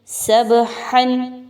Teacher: با کو ہلا کے پڑھیں گے، قلقلہ کریں گے اور ہا کو اس کے مخرج سے اچھا سا نکالیں گے